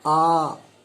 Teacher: ये जो है 2 मात्रा का होता है। इसको बोलने में ह्रस्व से 2 गुना समय लगता है। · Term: दीर्घ स्वर